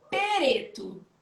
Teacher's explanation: É como se a gente colocasse uma vogalzinha no meio